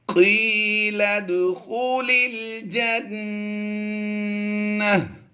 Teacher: نون مشدد میں ہم نے غنہ کرنا ہے